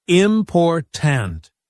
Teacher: in the word important, the stress is on the second syllable, important.